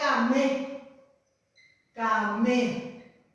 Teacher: Y la gente, o sea que ustedes, se confunden pensando que es oral y es tiguamba, es patigua, porque lleva la M, entonces nasaliza la palabra